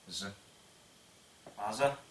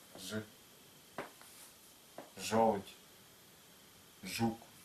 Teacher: Тувинская буква «ж», язык слегка площе, и кончик языка не приподнимается